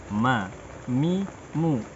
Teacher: setengahnya dari dua bibir setengahnya dari hidung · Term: huruf mim